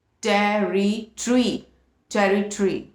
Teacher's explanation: इसमें British English में first syllable is टे, सेकंड इज री, थर्ड इज अगेन ट एंड फोर्थ इज री। लेकिन इसके ब्रिटिश में हम थर्ड और फोर्थ को मिला के एक करके इसको ट्री बना देते हैं, जो पेड़ की इंग्लिश होती है, and the pronunciation becomes टेरिटरी, टेरिटरी।